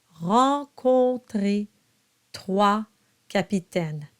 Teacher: Now the O-N is a nasalized O. So you have an O, drop the soft palate, and then it's nasalized.